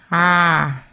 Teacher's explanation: pronounced with like a short a deep in the back of the throat